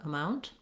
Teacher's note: I've been saying amount with a little bit of a T sound, letting the air out, amount. Other times I've been saying amount where I use what's called a stopped T there.